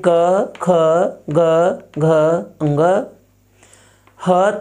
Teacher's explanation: उच्चारित वर्ण है अ आ क वर्ग यानी क ख ग घ ह तथा विसर्ग और इसका उच्चारण स्थान है कंठ